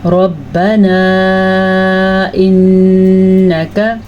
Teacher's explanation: را کو ہم نے پر پڑھا کیونکہ را پہ زبر ہے. مد کو ہم نے ادا کیا کیونکہ یہاں پہ جو مد ہے یہ 3 سے 4 حرکات عربیہ کے برابر لمبی کی جاتی ہے.